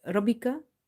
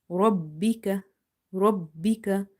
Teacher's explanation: Emphasize on ba in order to pronounce it twice. If you say Rabbika, you will miss one ba.